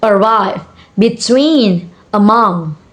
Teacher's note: And the next is most two syllable and preposition are stress on the second syllable